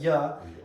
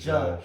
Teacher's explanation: the double L sound in the rest of Spanish, you can either make it a Y, like ya. In some places, it's like more aspirated, like a G sound